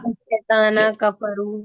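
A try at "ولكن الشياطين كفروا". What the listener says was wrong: شیطان نہیں ہے، شیاطین کفر. شیاطین شیطان کی جمع ہے نا،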